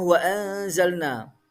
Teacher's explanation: Ada nun sukun bertemu za, dibaca ikhfa samar.